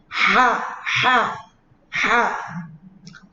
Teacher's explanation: Ha itu tempatnya di atasnya tenggorokan yang paling atas. Ha, halus, jangan kasar. Nanti kalau kasar kenanya terkesan kho.